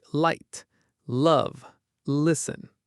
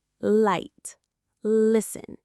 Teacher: Your tongue quickly touches and releases. It's a very clean, clear sound.